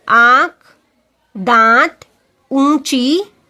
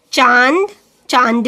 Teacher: इसका उच्चारण मुख और नासिका से होता है, मीन्स माउथ से एंड नोज से, मुंह से और नाक से। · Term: अनुनासिक